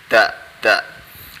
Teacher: belakang gigi depan lidahnya, kita taruh di situ